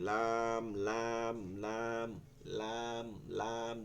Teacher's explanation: দেখছেন দাঁতগুলো চিহ্নিত করে দেওয়া হয়েছে এই দাঁতগুলোর এই যে জিহ্বাটা জিহ্বার আগাটা কোথায় লাগতেছে একটা সাইডে আগাটা এই দাঁতের মাড়িতে লাগতেছে